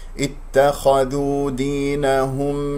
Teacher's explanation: اتخذوا الخاء مفخمة مرتبة ثانية مفتوح والذال مرقة، لا تقول اتخذوا، لا تفخم الذال لأن جاورت الخاء